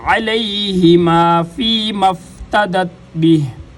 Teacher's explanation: علیہما حمزہ کے ساتھ پڑھیں گے غلط ہوگا، عین کے ساتھ